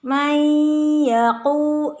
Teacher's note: nun sukun dengan ya adalah idgham bi gunnah